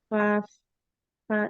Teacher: Dari bibir bawah bagian dalam bertemu dengan ujung gigi dari atas. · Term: asyafatan